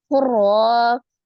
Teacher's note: Ro-nya juga dibaca dengan tebal karena berbaris fathah.